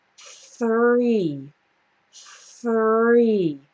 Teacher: I start with my tongue between my teeth and then my tongue just moves back into the r position